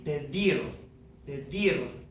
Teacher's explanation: Because it ends in a consonant, it's not N or S, that natural stress comes on the last syllable of this verb.